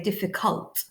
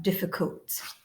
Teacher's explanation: the letter that's made in a schwa sound in green so in the word difficult the uh isn't fully pronounced if we were to fully pronounce it we'd say difficult but